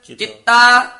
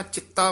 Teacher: ਚਿਤਾ ਨਹੀਂ ਕਹਿਣਾ ਚਿੱਤਾ ਬੋਲਣਾ ਹੈ ਕਸ ਕੇ